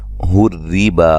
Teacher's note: را کو باریک پڑھیں گے، با یہ مد اصلی ہے، ایک الف کی مقدار کے برابر لمبا کریں گے